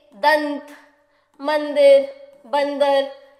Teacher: यहां पर हमें यह अंग की बिंदी की ध्वनि दे रहे हैं और इनका उच्चारण नाक से होता है। जब भी हम अ की बिंदी यानी कि अनुस्वार का उच्चारण करते हैं तो इसका उच्चारण हमारी नाक से होता है।